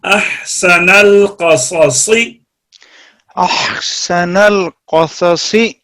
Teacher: صاد دو اکٹھے ہیں، دونوں صاد کو بالکل جدا جدا، ایک صاد زبر کے ساتھ ہے، ایک صاد زیر کے ساتھ ہے. دونوں میں تفخیم ہونی چاہیے · یہ حمزہ ہے اور آگے ہا وسط حلق سے